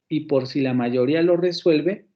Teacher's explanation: tenemos dos elementos que están acentuados. La sílaba ri y la sílaba suel. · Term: sílabas acentuadas